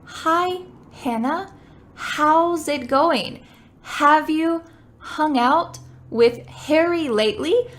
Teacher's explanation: the air that comes out of your mouth for the H is pretty light so it's not gonna move the paper like a piece out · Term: H sound